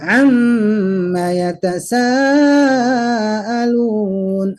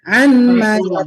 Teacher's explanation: Mim, man, min, ma, kan gitu ya. Min, ma, ketika nun ketemu mim itu langsung mim, ma, dan itu sudah umum orang Arab membacanya dengan idgham